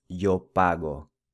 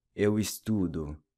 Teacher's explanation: Notice how the O in Portuguese is pronounced with a U sound.